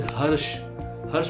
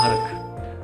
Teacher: प्राकृत भाषाओं के अंदर मूर्धन्य से कई बार जो लोकल्स होते हैं वो ख की तरह बोल देते हैं